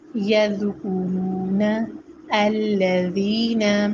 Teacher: جب ہماری زبان کی نوک ثنایا اولیہ کے دانتوں کو لگے تو پھر ذال ادا ہوتا ہے. ذال نرمی سے پڑھا جاتا ہے اور باریک پڑھا جاتا ہے.